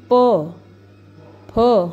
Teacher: हमारे जो लिप्स है, हमारे ओंठ है, वो आपस में जुड़ रहे हैं। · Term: ओष्ठ्य